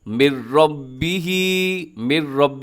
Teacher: نون بالکل ختم ہو جائے گا اس پہ، ادغام تام اس کو کہا جاتا ہے · یہاں پر ادغام ہو رہا ہے بغیر غننے کے، نون ساکن کے بعد یرملون کا را ہے